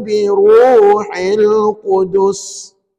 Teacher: qudus tu jangan panjang puan-puan ya